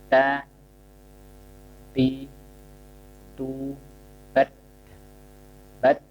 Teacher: Lidahnya tidak boleh terlihat. Huruf ta, ujung lidah bertemu pangkal gigi atas, ya. Tidak boleh keluar.